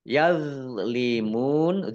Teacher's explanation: do sukun ini bukan qolqalah jangan dipantulkan